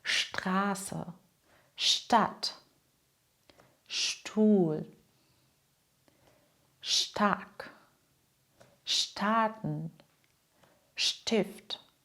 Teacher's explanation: Am Wortanfang spricht man: sp wie schp st wie scht